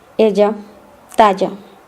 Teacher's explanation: the double L sound in Spanish is pronounced the same as Y in Spanish.